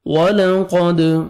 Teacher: واو پہ لپس کو راؤنڈ میں لے کے جائیں گے، قوف کو موٹا کر کے پڑھیں گے، دال حروف قلقلہ میں سے ہے، ڈبل ساؤنڈ آئے گا۔